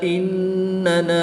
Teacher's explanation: الف مدہ کے بعد حمزہ دوسرے کلمے میں ہے، تو یہاں پر مد منفصل ہوگی، نون مشدد میں غنہ کر کے پڑھیں گے۔